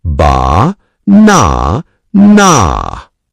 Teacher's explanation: Feel the strong beat in the middle. The word banana has a soft ba, a strong na, and a soft na. Ba na na. Pretend the word is a little song.